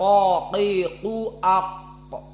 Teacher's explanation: Karena makhrajnya memang qaf itu pangkal lisan dengan al-hanak al-a'la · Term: isti'la